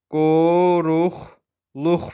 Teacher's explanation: Deyilişi ilə yazılışı arasında q-lər x-yə keçir. · Vurğu sonuncu hecəyə düşür. · Sonra üçü də dodaqlanır. Üçü dodaqlanandır.